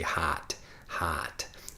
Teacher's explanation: nasal pronunciation I'm speaking with my nose it's a bit more of a Chicago accent · I say hot, hot, really using my nose when I speak